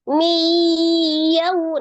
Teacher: Maka dari tadinya awalnya min jadi diidghamkan, berarti dimasukkan ke huruf ya. Nunnya seolah-olah tidak ada kan, langsung di mi ya. Mi. Ditekan mi, kemudian ditahan, berarti agak dua harokat, 1 2 begitu ya.